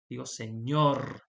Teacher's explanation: No digo señor, digo señor. Entonces, levanté la voz en la última sílaba